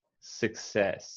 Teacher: I wouldn't say the U. I would say it more like the schwa.